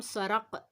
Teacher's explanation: جو ہمارا نرم تالو قوے کے قریب ہے وہاں جب زبان کی جڑ اوپر لگتی ہے تو قاف ادا ہوتا ہے